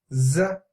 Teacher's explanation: your tip of the tongue is actually touching the root of your lower incisor